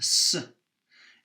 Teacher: is a voiceless alveolar fricative